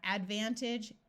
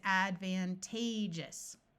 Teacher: Notice that when we add the us, this A takes on a long A sound.